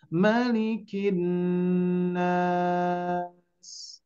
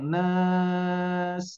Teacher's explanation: Nah, agak panjang nas. Jadi naknya agak dipanjangkan ya, karena ada huruf di akhir yang disukunkan karena waqaf. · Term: mad arid